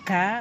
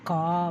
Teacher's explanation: குறில் எழுத்து ஒரு மாத்திரை, க ஒரு மாத்திரை, கா 2 மாத்திரை